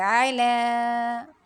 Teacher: عین کو وسط حلق سے پڑھیں گے